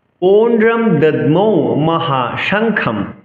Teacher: অনুসার পরে থাকলে আমরা অনুসারের জন্য ম উচ্চারণ করব।